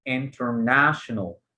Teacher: weak stressed syllable syllable that has a little bit of stress like the first syllable in international we say these syllables have weak stress or secondary stress international